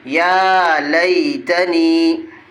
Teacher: یہ بھی یہ یا مدہ ہے، یا ساکن سے پہلے نون کے نیچے زیر ہے، اس لیے یا مدہ ہوگی، یا مدہ کو ایک الف کے برابر کھینچ کے پڑھیں گے۔ · یا کے اوپر کھڑا زبر ہے، اس لیے ایک الف کے برابر کھینچ کے پڑھیں گے۔